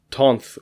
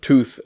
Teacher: causes the loss of nasals before fricatives, causing the nasalization and lengthening of a preceding vowel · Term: Ingvaeonic Nasal Spirant Law